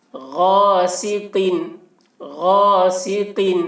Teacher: قاف کی آواز بھی موٹی ہوگی